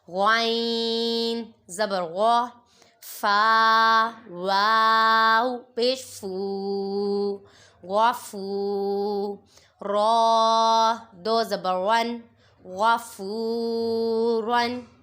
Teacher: غائن کو پر پڑھیں گے، حروف مستعلیہ میں سے ہے